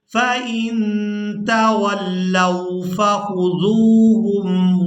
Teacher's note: اور اس سے پہلے والے حرف پر پیش ہے، تو یہاں ذال کو واو کے ساتھ ملاتے ہوئے کھینچ کر ادا کریں گے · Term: واو مدہ